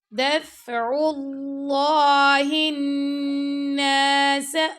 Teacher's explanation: دال فا کو ملایا تو فا پہ ہم نے ہمس کیا، دف کر کے نہیں پڑھنا، ٹھیک ہے.